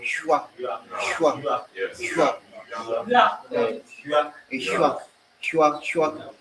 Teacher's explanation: So you are adding a y and a w. So that's palate and labia. So palate labia consonant sound.